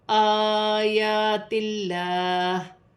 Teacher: اللہ کی لام سے پہلے زیر آ رہی ہے تو لام باریک پڑھی جائے گی ، آیات اللہ، لام پر کھڑی زبر